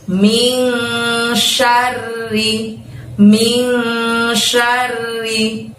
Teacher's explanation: Sya-nya pendek, R-nya double. Lalu kemudian bunyi ri-nya juga pendek